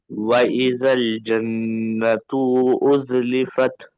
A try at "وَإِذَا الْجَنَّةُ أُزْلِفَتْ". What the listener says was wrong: ताकू के को खींच रहे हैं जी बाबा। ता मुतहरिक है ना, हरकत वाले को नहीं खींचना। वो इदल जन्नतु उज़लिफत।